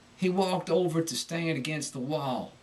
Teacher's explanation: can be described as a shaking and Pitch as the word is uttered a sort of tremolo